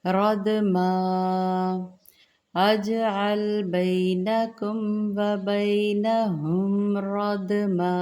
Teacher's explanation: رد، را زبر دال، رد دال پر جزم، یہ بھی قلقلہ پڑھیں گے نمایاں۔